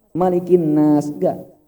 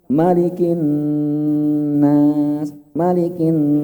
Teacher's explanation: Nun bertasdid ini levelnya tinggi. Maka perlu ditahan lama. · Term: gunnah